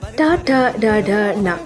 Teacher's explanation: ಟ ಠ ಡ ಢ ಣ ಈ 5 ಅಕ್ಷರಗಳು ಬಾಯಿಯ ಮೇಲ್ಭಾಗದಲ್ಲಿ ಹುಟ್ಟುತ್ತವೆ. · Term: ಮೂರ್ಧನ್ಯ